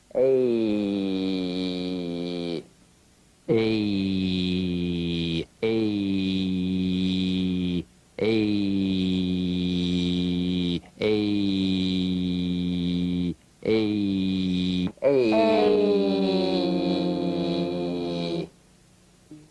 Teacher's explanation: This is a variation of the Y buzz. It's a diphthong, that is, two sounds blended into one. It's E plus E.